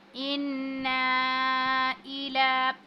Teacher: अब लाम पर जो है ये खड़ी ज़बर है, इसको भी खींचेंगे